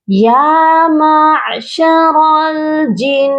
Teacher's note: یہاں پر دیکھیے نون مشدد ہے اور نون مشدد پر ہمیشہ غنہ کرتے ہیں، تو یہاں پر آپ لوگ غنہ کریے گا، یا معشر الجن۔